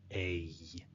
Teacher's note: When I say the sound a, my mouth actually moves twice.